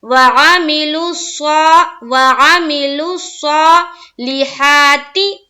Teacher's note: لام کو صاد سے ملائیں گے اور صاد کو پھر کھڑا زبر کے ساتھ پڑھیں گے منہ بھر کر